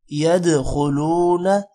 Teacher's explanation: دال پر قلقلہ جبکہ خا موٹا ہوگا